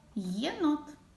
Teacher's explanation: перший звук в слові єнот звук й м'який приголосний і звук е голосний єнот звук н твердий приголосний єнот звук о голосний і останній